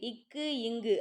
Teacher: இக்கு இங்கு ஆகிய இருமைகளும் நாவின் முதற் பகுதி அன்னத்தின் அடிப்பகுதியை பொருந்துவதால் பிறக்குது